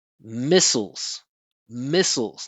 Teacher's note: It's an unstressed syllable that has an L at the end. So the vowel disappears.